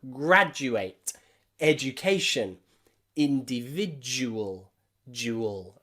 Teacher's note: Don't make that mistake and have a D sound here. The D followed by the letter U is a J, J, J sound.